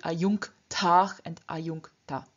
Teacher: in front of this velar k, the palatal n changes into the velar n · Before the endings tach and ta, which both begin with a voiceless consonant, namely t and t respectively, the j at the end of the stem also loses its voice, therefore becoming ch.